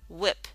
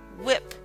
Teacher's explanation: That's an aspirate. That means you can, if you put your hand up to your mouth when you say wh, you'll feel some air.